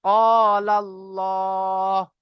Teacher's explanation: আল্লাহ শব্দের লামের আগে জবার এসেছে তাই আল্লাহ শব্দের লামকে পুর করে পড়বো।